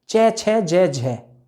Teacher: जीभ स्पर्श भी करेगी मुख में और प्राणवायु संघर्ष भी करेगी। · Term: स्पर्श संघर्षी